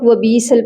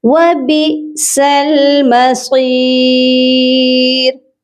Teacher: اب یہاں پر دیکھیے حمزہ ہے، وبیسل نہیں ہوگا، با حمزہ زیر بی، حمزہ ساکن ہے اسی لیے جھٹکا دے کر پڑھا جائے گا